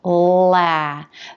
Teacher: tip of the tongue is lifted up and making contact behind the upper teeth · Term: light l consonant sound